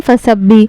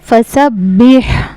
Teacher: हा का मखरज है हलक का दरमियान वाला हिस्सा